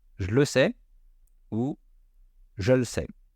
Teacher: on n'est pas obligé de faire tomber le E du jeu